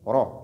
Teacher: La lettre Ra dans Hafs, lorsqu'elle porte Fatha, elle est lue de façon emphatique. Donc, bitafrim, ro, et non, ra.